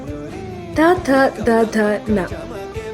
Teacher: ತ ಥ ದ ಧ ನ ಇವನ್ನು ಹೇಳುವಾಗ ನಾಲಿಗೆ ಹಲ್ಲಿಗೆ ತಾಕುತ್ತೆ. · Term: ದಂತವ್ಯ